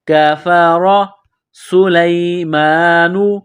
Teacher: سین میں سیٹی کی آواز پیدا کریں گے، سین کو باریک کریں گے، لام کو یا کے ساتھ ملانا ہے۔